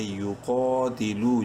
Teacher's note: یقا تاضیر تی، لام واو پیش لو، واو مدہ ہے، لام کو ایک الف برابر لمبا کریں گے. یقاتلو، جتنا قاف کو لمبا کیا اتنا ہی لو کو بھی لمبا کریں گے